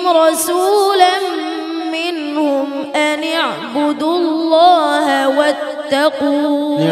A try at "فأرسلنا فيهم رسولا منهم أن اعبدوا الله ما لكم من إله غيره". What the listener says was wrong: اعبدوا الله ما لكم من إله غيره. একটু তো দুইটা শব্দ বাদ যাইতেছে। মা লাকুম মিন ইলাহিন গায়রু আছে না? বলো আবার।